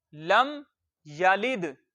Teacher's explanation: दाल के ऊपर जजम है, दाल साकिन है, ये फिर अपने से पहले वाले हर्फ से मिल जाएगा, लाम को दाल के साथ मिला देंगे। लाम जेर दाल लिद, या दबर या, लाम जेर दाल लिद, या लिद।